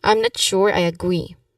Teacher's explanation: Also emphasize on sure. the word sure.